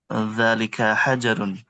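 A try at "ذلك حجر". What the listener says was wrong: Naam. Hajarun. Barakallahu fikum. Mumtaz.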